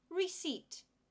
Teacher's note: we don't pronounce the P